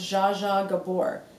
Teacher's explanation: it's the J sound that's in her name that you need to pronounce with the J in Portuguese and the J is like that in every word